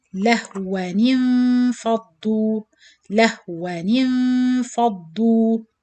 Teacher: The second fatha, which is noon sakin sound of tanween, you change it into noon kasra.